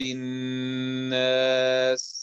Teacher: الناس لا تغلق الناس، يعني هذا تحتاج إلى جريان صوت وفيها همس